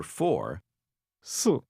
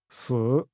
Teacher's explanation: 4 4 is pronounced with a falling tone, while the word for death 死 is pronounced with a tone that falls and rises again.